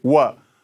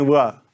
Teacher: व के उच्चारण में आपको होठों को सटने नहीं देना है। होठों को गोल करके आगे की तरफ ले जाना है।